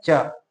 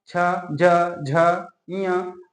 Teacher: इन पांच वर्णों का उच्चारण स्थान है आपका तालव्य तालू से इन वर्णों का उच्चारण किया जाता है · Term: तालव्य व्यंजन